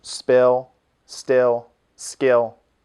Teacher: there's no puff of air · We do have unvoiced, unaspirated consonants in English, but only after an S, as in spill, still, and skill.